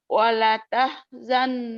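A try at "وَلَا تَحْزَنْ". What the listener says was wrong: Wala panjang. Wala. Wala tahzan alaihim.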